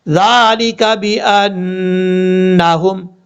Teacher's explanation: پڑھنا ہے، وَهُمْ مُعْرِضُونَ، اب اس کے بعد ہے ذَلِكَ بِأَنَّهُمْ، ذال کے اوپر کھڑا زبر ہے، ایک الف کی مقدار لمبا کریں گے